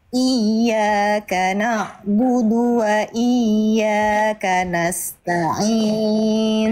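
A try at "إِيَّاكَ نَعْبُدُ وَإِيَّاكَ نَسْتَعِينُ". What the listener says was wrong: Tinggal ain sukun Bunda. Ain sukun sedikit mengalir, suaranya sedikit. Na'budu. Na'budu. Na'budu. Jadi a-nya itu ainnya harus terus sedikit jalan. Na'budu. Na'budu. Na'budu.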